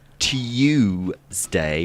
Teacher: People of our grandparents' generation would have said Tuesday with a y in it.